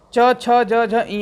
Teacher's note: च वर्ग का उच्चारण स्थान किससे होता है? तालु से होता है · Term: तालव्य